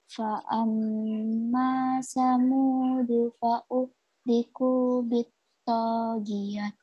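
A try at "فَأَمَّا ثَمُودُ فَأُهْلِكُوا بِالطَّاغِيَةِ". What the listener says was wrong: Bagus sekali.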